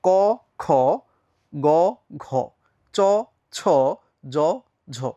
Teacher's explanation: ক বললে যে পরিমাণ বাতাস বের হচ্ছে, খ বললে তার চেয়ে বেশি আসছে। গ বললে যে পরিমাণ বাতাস বের হচ্ছে, নিঃশ্বাস বের হচ্ছে, ঘ বললে তার চেয়ে বেশি নিঃশ্বাস বের হচ্ছে কিনা? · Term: মহাপ্রাণ, অল্পপ্রাণ, মহাপ্রাণ